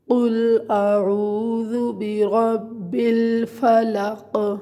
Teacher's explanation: را کو آپ نے پر پڑھنا ہے کیونکہ را کے اوپر زبر ہے